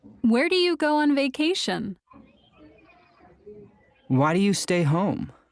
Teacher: In information questions, our voice usually goes down. We call this falling intonation.